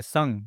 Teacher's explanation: जो ज्यादातर आवाज निकल रहा है वो नाक से निकल रहा है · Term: अंशक्वार